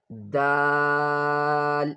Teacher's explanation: The outlet of dal, the tip of the tongue, touches the upper front teeth area quickly.